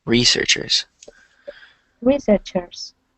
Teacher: you want to stress the first syllable